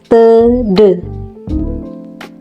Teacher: Seperti kita lihat pada gambar di bawah ini, langit-langit lunak beserta anak tekaknya dinaikkan, ujung lidah menekan rapat pada gusi sehingga udara yang dihembuskan dari paru-paru terhambat untuk beberapa saat. Ujung lidah yang menekan rapat pada gusi itu kemudian secara tiba-tiba dilepaskan. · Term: konsonan hambat letup apiko-alveolar